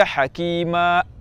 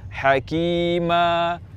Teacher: suara lepas tanpa menutup pita suara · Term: mad iwad